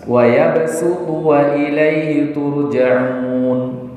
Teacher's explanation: Itu dibaca dengan sin walaupun penulisannya di situ ditulis dengan huruf shad. Nah, ini tadi makanya dikatakan gharibah, aneh.